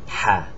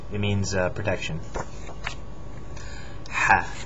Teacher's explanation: It's pronounced like an H, but more friction in the back of the throat.